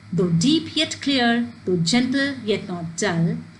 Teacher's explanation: So here you don't have to count the words, rather there is a counting of syllable. There are 5 pairs of unstressed and stressed syllables arranged in line. That means 10 syllables per line rhyming in a couplet. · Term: iambic pentameter